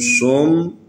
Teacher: یہ صاد حروف استعلاء میں سے ہے، اس کو موٹا پڑھنا ہے